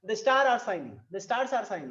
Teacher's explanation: हमारा जो टोन है वो फॉल हो रहा है, यानी खत्म हो रहा है, यानी नीचे की तरफ डाउन हो रहा है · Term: फॉलिंग टोन